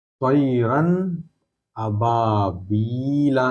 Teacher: नून साकिन या तनवीन की आवाज जाहिर करके आगे बढ़ जाएंगे, गुन्ना नहीं करेंगे। गुन्ना मतलब नाक में आवाज रखना, गुन्ना मतलब, गुन्ना नाक में आवाज रखने को गुन्ना कहते हैं, ठीक है।